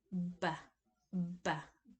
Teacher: bilabial voiced stop, such as in batch.